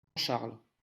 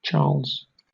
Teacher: Entonces fíjate que tenemos el dígrafo CH en las dos lenguas, pero en francés tenemos sh, Charles. en inglés tenemos che.